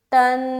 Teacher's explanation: نون کے اوپر مشدد آ گیا تو نون مشدد کا غنہ کریں گے